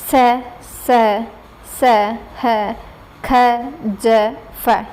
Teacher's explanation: जिन व्यंजनों के उच्चारण में 2 उच्चारण अवयव इतनी निकटता पर आ जाते हैं कि बीच का मार्ग छोटा हो जाता है, तब वायु उनसे घर्षण करती हुई निकलती है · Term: संघर्षी व्यंजन